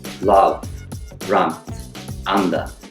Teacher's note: our tongues aren't gonna come forward the tongue will actually come back further in the mouth and very relaxed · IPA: ʌ